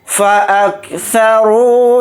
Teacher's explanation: طغوا فی البلاد فَأَكْثَرُوا فِيهَا الْفَسَادَ، فا کو جلدی پڑھیں گے، حمزہ کو کاف ساکن کے ساتھ ملا کر پڑھیں گے ، سا کو جلدی پڑھیں گے، را کے ساتھ واو مدہ